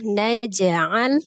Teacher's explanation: Hukumnya adalah qalqalah ya, karena dia diwasol atau disambung di tengah-tengah, maka hukum qalqalahnya qalqalah sughra, kecil ya.